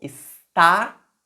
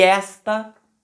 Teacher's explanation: Está, tem a sílaba tônica lá no final, na última sílaba. E esta tem a sílaba tônica na primeira sílaba.